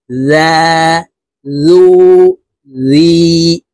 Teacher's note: জালের উচ্চারণ জিহ্বার আগা থেকে পড়বো